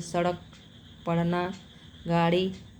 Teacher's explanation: यह हिंदी में ड और ढ के नीचे हिंदी बिंदी लगाने से होता है। इनका उच्चारण करते समय जीभ झटके से ऊपर उठ जाती है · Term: उत्क्षिप्त व्यंजन, उच्छिप्त व्यंजन